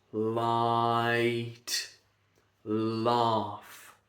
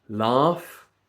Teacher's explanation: It's a lateral releasing sound.